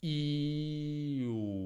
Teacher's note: la lingua va avanti e indietro. Lo senti? E le labbra poi si arrotondano.